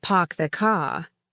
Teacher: People dropped their R's. Park the car sounded like pock the caw.